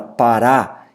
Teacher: a última sílaba, o ra, é tônico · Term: oxítona